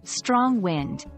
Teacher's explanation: Notice the stress is on the first word, strong.